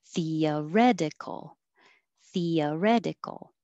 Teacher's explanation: before your voice goes higher it stays flat